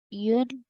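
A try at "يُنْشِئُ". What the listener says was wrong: Yeah, let's try and just elongate the noon sound a bit more.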